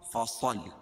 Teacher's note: صاد کو موٹا پڑھیں گے کیونکہ حروف مستعلیہ میں سے ہے، اور صاد کو لام میں ملائیں گے کیونکہ لام کے اوپر تشدید ہے.